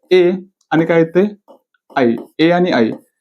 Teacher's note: कंठ आणि तालू कंठ आणि तालूच कॉम्बिनेशन कंठ तालव्य